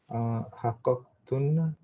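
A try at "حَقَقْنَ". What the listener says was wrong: No, hunna, just hunna. So it's not hakakna. Hakak. You're almost there, but don't have the tuna. The two is not there. With no two. So hakak.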